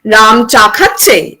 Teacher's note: So number one, we can see that we have a declarative clause, and at the end of the declarative clause, if we have a rising tone, it gives an yes-no interpretation